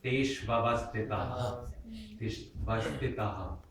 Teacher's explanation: notice I echo the H dot at the end